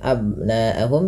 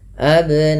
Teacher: Kemudian pada lafal abnaahum ada ba sukun yang di mana ba sukun ini bila ia sukun atau mati dihukumi dengan bacaan qalqalah karena ada sifat yang melekat pada huruf ba yaitu qalqalah yang di mana memantul ya bunyinya